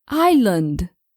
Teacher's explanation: we never pronounce the consonant S